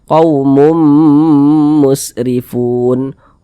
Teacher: digunahkan didengungkan jadi suaranya itu kita tahan kita panjangkan sejenak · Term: idgham bhunah, idgham bi gunnah